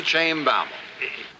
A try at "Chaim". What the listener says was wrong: It's not shame. It's not came. It's pronounced Chaim.